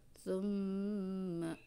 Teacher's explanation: Tapi di sini ada kaidah atau ada hukum namanya gunnah. Cara pembacanya itu adalah ditahan di hidung ya, tekanan ditahan di hidung, dua ketukan